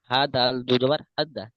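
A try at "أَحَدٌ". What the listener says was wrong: হা দাল দু জবর নয়, এক জবর, হা দাল জবর হাদ।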